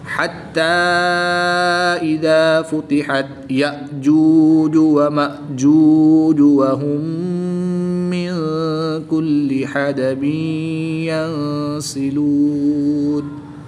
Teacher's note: نون ساکن کے بعد سین حروف اخفا میں سے ہے تو یہاں پر بھی غنہ کر کے پڑھیں گے